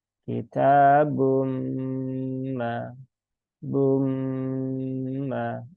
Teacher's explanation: sambil didengungkan dia masuk ke rongga hidung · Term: idgham bigunah